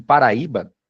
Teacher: a sílaba mais forte é a segunda de trás para frente, é a penúltima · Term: paroxítona